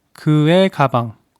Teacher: When '의'(eui) is in between two separate words, it makes 에(eh) sound.